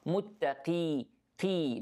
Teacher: Don't say muttaqi, okay? The qaf here in the lowest level of tafkhim.